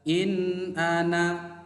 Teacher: bunyi suaranya tetap jelas, tidak samar dan tidak berdengung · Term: izhar